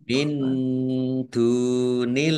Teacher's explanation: Allahnya dibaca tipis karena harokat di depannya kasroh